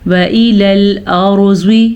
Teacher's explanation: را کو پر پڑھنا ہے اور زوات کو بھی پر پڑھنا ہے